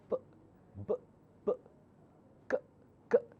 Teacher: consonants you cannot continue P you have to stop